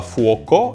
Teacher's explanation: avec le maintien du son /k/ du latin